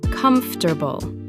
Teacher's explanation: Only 3 syllables in natural speech, not 4.